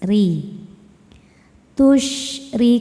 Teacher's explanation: dibaca secara tarqik karena ro berharakat kasrah. Cara baca huruf r-nya ini adalah dibaca dengan tipis. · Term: tarqiq